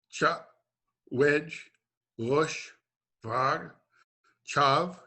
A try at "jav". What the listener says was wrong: And so your jav, I heard a ch instead of a j. I heard chav, which means an accomplishment or to accomplish, or an achievement or to achieve. Jav.